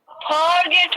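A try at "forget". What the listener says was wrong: फिर फॉरगेट ऐसे नहीं, इसको ऐसे बोलोगे फॉरगेट. फॉरगेट, फॉरगेट लंबा ऐसे फोर तक नहीं बोलोगे, फॉरगेट.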